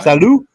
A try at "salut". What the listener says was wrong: It's not salute, it's salut.